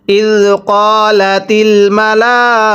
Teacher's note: কফের মধ্যে টান দিব এক আলিফ